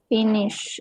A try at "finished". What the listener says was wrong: Finish. D. Final D. Finished.